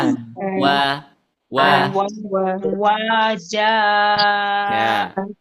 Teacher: makhj huruf w itu ada di asyafatan ya ada di kedua kedua bibir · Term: huruf wau